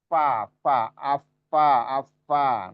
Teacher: fa itu hamesnya ya, hamesnya. Hamesnya sangat kentara gitu.